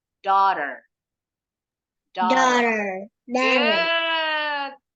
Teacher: kalau orang Inggris lebih monyong o o dan huruf r terakhirnya enggak bunyi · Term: British English